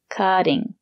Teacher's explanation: the letter T is between vowels we pronounce it as the fast D